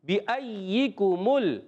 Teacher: کاف جو ہے زبان کی جڑ اور تالو کا سخت حصہ، یہ کاف باریک ہوتا ہے، اور ایک ہوتا ہے قوف، وہ موٹا ہوتا ہے، یہ کاف ہم نے باریک رکھنا ہے، بِأَيِّكُمُ، گڈ۔